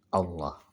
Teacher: tebal-tebalnya itu dengan mengangkat pangkal lidah kita